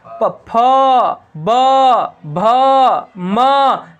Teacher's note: प, फ, ब, भ, म, सब में होठ सट रहा है। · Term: ओष्ठ